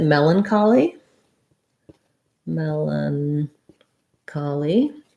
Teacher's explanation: first syllable stress in melancholy it has the red tent vowel um so melon here's this a n says schwa or if